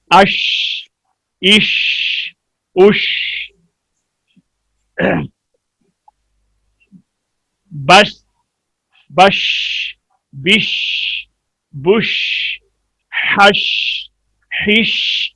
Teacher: अदायगी के वक्त आवाज मुंह में फैल जाए, सिर्फ शीन में पाई जाती है। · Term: तफशी